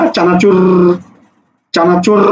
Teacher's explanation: র বারবার আঘাত করে, এই আঘাত করার কারণে, দাঁতে গিয়ে আঘাত করার কারণে এটাকে বলা হয় কম্পনজাত ধ্বনি।